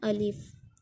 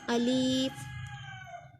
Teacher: अलिफ को हमने लंबा भी नहीं करना, झटका भी नहीं देना, बल्कि नरमी से मारूफ पढ़ना है, अलिफ। कुछ लोग इसको लंबा कर देते हैं, अलीफ, और इस तरह नहीं पढ़ना बल्कि नरमी से इसको मारूफ पढ़ना है, अलिफ।